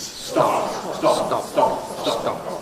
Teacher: I've got to open my lips in due course, but you don't hear any release. Practice saying stop with no audible release.